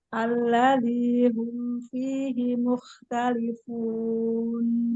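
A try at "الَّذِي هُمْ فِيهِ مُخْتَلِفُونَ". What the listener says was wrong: Gesek sedikit lagi. Alladzi,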